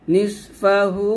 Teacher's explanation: আবার ইল্লা এভাবে তারপর নিসফাহু নিস এই নুনকে সদকে ধরবে নিস নিস এবং সদ মোটা হবে তিন আলিফ টান দিবেন